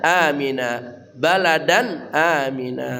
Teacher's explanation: Baladan tanwin bertemu hamzah, suaranya dibaca jelas dan ya tanpa dengung ya